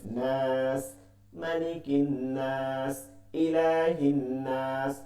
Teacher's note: মাদের হরফ বা মাদের হরকতের পরে ওয়াকফ করলে এটা কি হয়? 3 আলিফ হয়, মাদ্দে আরজি হয়